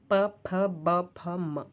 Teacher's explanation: ओष्ठ व्यंजनों के उच्चारण में दोनों ओठ परस्पर स्पर्श करते हैं। जिह्वा निष्क्रिय रहती है।